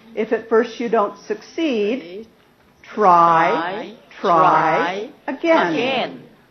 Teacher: Rising rising Rising because I'm not finished and then Rising falling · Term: intonation Contour